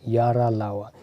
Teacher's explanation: अल्प प्राण ध्वनियाँ हैं और सघोष ध्वनियाँ हैं, यानी कि इनके बोलने पे जो है स्वर तंत्रियों में ध्वनि कंपन के साथ निकलती है